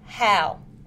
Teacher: Is made using the glottis. It is a fricative sound and is voiceless. The vocal cords do not vibrate.